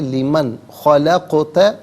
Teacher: نون ساکن کو اظہار کے ساتھ پڑھا جائے گا، اخفا یا غنہ نہیں کیا جائے گا